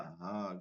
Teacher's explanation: গম্ভীর আওয়াজে হা বাতাসকে বন্ধ করে হা দিতে হবে